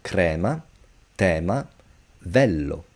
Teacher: E, the open sound of E, as in the word bad, man, band, is precisely like this, E.